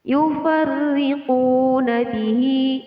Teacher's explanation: Yufarriquna bihi, kembali lagi bertemu dengan hukum bacaan matobi'i ditandai dengan huruf waw sukun yang didahului harokat dhammah, jadi qaf di sini dibaca panjang.